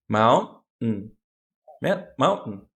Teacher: So you say mount, you go to the T, but you don't release the air. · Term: glottal stop